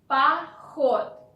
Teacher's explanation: first O is not stressed, so you want to pronounce it like A. Поход. And the last thing, D at the end of the word we pronounce like T in spoken Russian language.